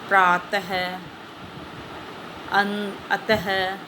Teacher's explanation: अह ये विसर्ग होता है, इसका उच्चारण ह वर्ग के समान होता है